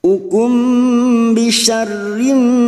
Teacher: mim sukun bertemu ba ikhfa safawi, mim sukun mendengung selama 2 atau 3 harokat.